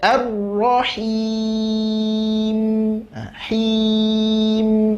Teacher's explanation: Mim juga sifat tawasud. Nggak boleh dipotong langsung habis, tidak. Sedikit ngalirkan huruf mimnya.